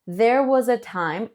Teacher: this S in was, sounds a little bit like a Z, right?